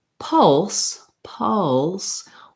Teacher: then the word pulse pulse what's hard about that is that the schwa goes into the dark l sound · that the schwa goes into the dark l sound and so for the l sound in pulse what you need is to be able to keep the back of your tongue down even though the front of your tongue is lifting up for the l